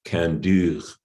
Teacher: They use this form kandur, where the root kand has come out in Agulis as kand with a front vowel, and that frontness then spreads on to the o, which normally becomes ur in this dialect, and makes it front. So you get kandur with a front vowel in the suffix.